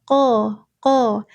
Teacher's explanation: Qo itu pangkal lidah. Pangkal lidah.